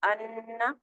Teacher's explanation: پہلے نون کو چھوڑ دیا گیا، دوسرے نون کو 2 مرتبہ پڑھ لیا گیا، غنہ کے ساتھ ادائیگی کی گئی